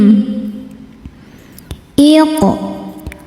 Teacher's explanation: Cara membacanya dipantulkan qofnya ini dengan pantulan yang kecil. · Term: qalqalah sugro